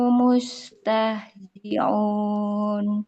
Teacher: Bukan aun tapi sempurna bunyi mustahziun, hamzah a i u.